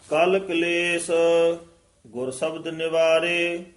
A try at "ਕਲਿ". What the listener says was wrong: ਇਹ ਕੱਲ ਨਹੀਂ ਕਹਿਣਾ, ਕਾਲ ਪੂਲਾ ਹੀ ਉਚਾਰਨ ਕਰਨਾ ਹੈ। ਕਾਲ ਕਲੇਸ਼ ਗੁਰ ਸ਼ਬਦ ਨਿਵਾਰੇ।